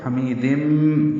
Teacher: تنوین کے بعد میم آنے کی وجہ سے میم مشدد ہوگا تو حمیدم، یعنی یہ قاعدہ ہوگا. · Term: ادغام